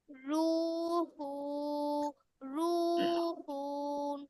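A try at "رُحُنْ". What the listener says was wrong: হু না, হা দুই পেশ হুন, হায় দুই পেশ আছে না। হুন কেন টান দিচ্ছ?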